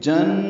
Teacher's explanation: نون مشدد پہ غنہ ہے 2 حرکات آواز ناک کے پانسے میں لے جائیں گے، ناک ہر زبر قائم مقام مد ہے اس لیے 2 حرکات لمبا کریں گے۔